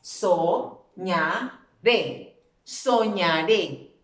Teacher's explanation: ¿Dónde recae la fuerza de la voz? Muy bien, en la última sílaba. Entonces, por eso la tengo aquí subrayada, última sílaba, y termina en una vocal.